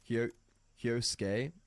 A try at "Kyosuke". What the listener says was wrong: Just don't pronounce the U's. Look at it. No.